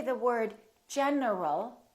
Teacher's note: my tongue is moving for the N and it's moving for the L